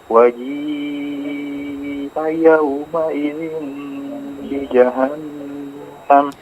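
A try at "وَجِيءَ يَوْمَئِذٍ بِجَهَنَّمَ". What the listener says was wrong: Ya, diperjelas huruf dzalnya ya.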